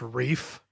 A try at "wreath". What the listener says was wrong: wreath with a th